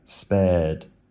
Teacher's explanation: has a long air, which you could possibly analyze as just being 2 short sounds in a row